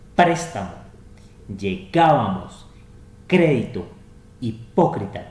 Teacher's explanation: las palabras esdrújulas que son las que tienen su acento en la antepenúltima sílaba